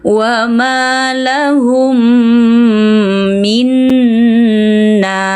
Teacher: Mim mati bertemu mim. Idgham mimi. Bersenandunglah selama dua hingga tiga harakat juga. · Idgham bighunah. Suara dengung pun ikut terdengar.